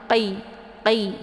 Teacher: Pangkal lidahnya diangkat ke langit, tersentuh dengan langit yang lunak ya